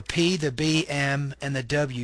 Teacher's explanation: these are consonants made by bringing both lips together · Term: bilabial consonants